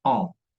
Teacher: cuando hay la presencia de la E y de la N, normalmente es una vocal nasal y se pronuncia en